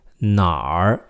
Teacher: really it's the word 哪 plus a R at the end. It's an example of 儿 化.